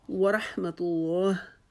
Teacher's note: جب ہم طلاح پڑھیں گے تو پہلے تا کو ہم باریک پڑھیں گے، ادھر سے ہی ہم تا کو موٹا نہیں کریں گے کہ اللہ کے لام سے پہلے پیش آ رہی ہے تو ہم نے لا کو پر کر کے پڑھنا ہے، لیکن ہم نے پہلے تا کو باریک کر کے اس کی آواز باریک نکال کے پھر ہم اللہ کے لام کی جو ہے اس کو موٹا کریں گے